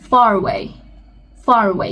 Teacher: there are some exceptions where you actually pronounce the R as it is, even in British.